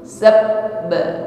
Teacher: Maka ketika kita mengucapkan ba tasydid di situ sabba ya, ada bunyi yang tertahan di situ ya, karena makhrajnya tertutup dengan sempurna sehingga suaranya tertahan karena tekanan yang sangat kuat pada huruf ba tersebut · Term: syiddah